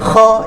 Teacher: Huruf kha ni sifatnya tersekat-sekat sedikit di bahagian kerongkong. Ataupun leher kita bahagian atas sekali, halkum kita bahagian atas sekali ni.